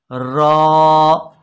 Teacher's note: ज़बान की नोक ये थोड़ा सा पीछे मोड़कर, इसे कहते हैं माइल ब पुश्त, और सामने वाले मुकाबल के तालू से ये रॉ अदा होगी